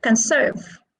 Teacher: where is the stress it is on the second syllable because conserve is a verb